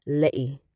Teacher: In this case, it's also giving a Cockney British accent, as she says Letty's name, Letty. Glottal stop in the T.